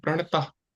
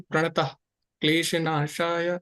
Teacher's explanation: विसर्ग के बाद अगर कठोर व्यंजन आता हो तो विसर्ग का उच्चारण आघात देकर ह जैसे करना चाहिए आपको रुकना है वहां पे और ह जैसा कठोर व्यंजन कौन से हैं कठोर मतलब जहां पे अघोष अघोष को कठोर बोलते हैं।